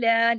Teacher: عین کو حلق سے پڑھنا ہے